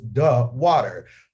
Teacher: DE is duh whenever there's a consonant after the word